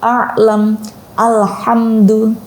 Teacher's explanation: tengah tenggorokan ini adalah ain, ha